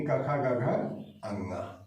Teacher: तो प्रारंभ के 2 स्वर, ठीक, उसके बाद लास्ट का स्वर अ, उसके बाद क वर्ग यानी क ख ग घ अंगा, इतना कंठ से उच्चरित होता है